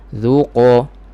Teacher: Makhraj huruf qaf, pangkal lidah sentuh pada langit lembut, belakang sedikit berdekatan dengan anak tekak. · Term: makhraj qaf